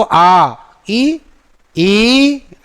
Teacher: तो इसमें ज़्यादा वायु भी खर्च करनी पड़ी, ह्रस्व का 2 गुना समय लगा। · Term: दीर्घ स्वर